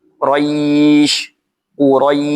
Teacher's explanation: bunyi sukun huruf syin ini banyaknya keluar angin ketika mengucapkannya. Karena huruf syin ini memiliki juga memiliki sifat tafasyi. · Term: sifat tafashi